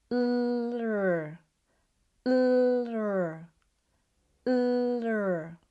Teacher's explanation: This is the strong British R sound, as your tongue is at the back of the alveolar ridge and high in the mouth. So instead of thinking about the R as a throat sound, think about it similar to the L sound but with the tongue slightly back.